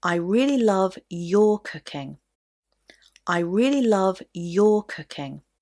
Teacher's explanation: your cooking so which word did I stress there that's right I stressed your because I want to emphasize that I especially like your cooking rather than anybody else's